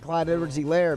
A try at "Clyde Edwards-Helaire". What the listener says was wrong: You emphasize the layer. Emphasize the E. Elaire. You said Elaire. It's Elaire.